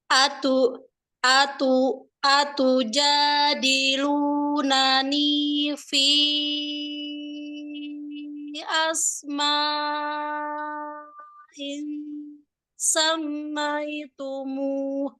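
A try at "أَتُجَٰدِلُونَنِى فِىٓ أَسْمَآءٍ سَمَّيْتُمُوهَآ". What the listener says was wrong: Karena V-nya, Ana tadi ngitung kayaknya lewat dari 5 harokat. Jadi dia kepanjangan 4 sampai 5. Nanti asma. Nah, itu panjang. Ini yang terlewat itu adalah ketika udah asma in ketemu sin. Win ketemu sin. Ini harusnya dengung 3 harokat. Itu nggak terpenuhi. Mim tasdid harusnya 3 harokat. Ini jadi nggak terpenuhi.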